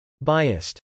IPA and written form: bˈaɪəst (biased)